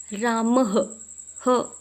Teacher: ह जो है यह हमारे कंठे से निकलता है · विसर्ग का उच्चारण स्थान क्या है, तो कंठ है